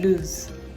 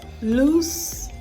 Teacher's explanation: Now for lose, the L-O-S-E, you have Z as the last consonant sound. But for the other one, loose, you have S as the last consonant sound. You remember the voiceless sounds and the voiced sounds.